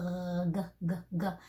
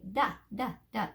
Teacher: get the feeling of that g sound where the back of the tongue goes up instead of the front. Instead of saying d.